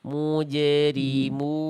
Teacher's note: biarkan bunyi pantulan jimnya jangan berat Bunda. Ringankan saja.